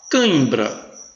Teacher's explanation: Veja o tio nasalizando aí o A.